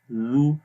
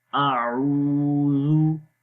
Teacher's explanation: زبان کی نوک کو اوپر والے دانتوں کے کناروں پر لگاتے ہیں تو زال کی آواز پڑھی جاتی ہے